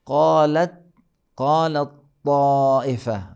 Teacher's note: اور پھر تا کو طا میں، توئی میں، تا کو طا کے اندر، قالت طائفہ، قالت طائفہ، اب یہاں پہ قالت طائفہ، یعنی بالکل پہلے والا تا بعد والے میں ادغام ہو جائے گا